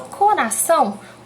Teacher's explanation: Quando ela é a última sílaba, a gente tem o exemplo da palavra coração. Quando a gente fala coração, o são é mais forte, então ela ficou na última sílaba. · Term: sílaba tônica